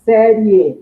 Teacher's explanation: Você fala série, esse IE, você fala num só impulso.